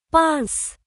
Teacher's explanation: A long hissing sound like air escaping a balloon.